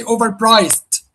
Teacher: Priced, that's the longest vowel here, or the longest chunk of the word. So that's the stressed syllable, overpriced.